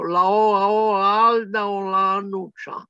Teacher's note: Pronunciata dai fiorentini, spariscono tutte le C, non si capisce che lingua sia.